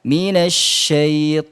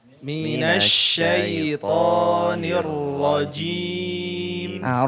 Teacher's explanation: makhrajnya tempat keluarnya kan ujung lidah ya bertemu dengan langit atas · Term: huruf ro